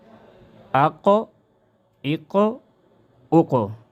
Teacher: آواز مخرج میں ہل جائے کیونکہ اس میں قلقلہ ہے۔ اق اق اق۔ قاف جب ساکن ہو اس میں قلقلہ ہوتا ہے، جنبش حرکت جیسا۔